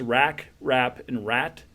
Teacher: We have a velar, bilabial, and alveolar